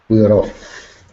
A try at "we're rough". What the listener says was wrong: So to make your life easy, you pass the R. If you don't pass the R, it's difficult. We are off. Difficult. We rough. Easy. We rough. We rough.